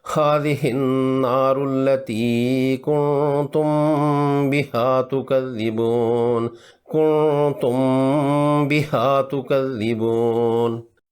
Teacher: کنتم کی میم ساکن ہے اور اس کے بعد حرف با آ گیا، مکسور ہے با، تو با کے آنے کی وجہ سے اس پر اخفاء شفوی کا قاعدہ لگے گا۔ میم کو ناک کے بانسے میں لے جا کر خفیف غنہ کریں گے، 2 حرکات لمبی کریں گے۔